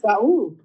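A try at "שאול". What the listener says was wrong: It's not Saul. It's Shaul. That is the name Saul. It's the same name, but the way it's pronounced in Hebrew is not Saul,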